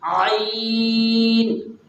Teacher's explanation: عین اس کی ادائیگی نہیں ہے، وہ حمزے کی ادائیگی ہے، وہ حمزے کی طرح پڑھا جاتا ہے، بلکہ اس کو تھوڑا زور لگا کر کے بیچ گلے سے اس کی جو ہے ادائیگی کریں گے، عین۔ اس کے بعد والا حرف ہے غین۔